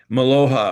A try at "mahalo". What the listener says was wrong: Mahalo. You said it's aloha, which is hello and love, and mahalo is thank you. So you kind of mix the two together.